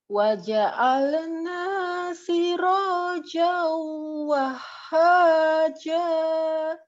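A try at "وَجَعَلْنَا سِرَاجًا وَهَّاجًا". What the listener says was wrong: Sisa nanya ukuran mat tabi'i, hati-hati itu tadi kelebihan. Potong lagi ya sedikit. Nanya di wahad juga, wahha kelebihan juga.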